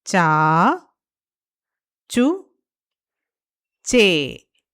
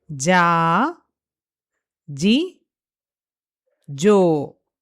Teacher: So, uccarana sthanam for this varga, that is cavarga, is taluhu. These sounds are produced near the palate, the roof of the mouth. In Sanskrit, it is called as talu.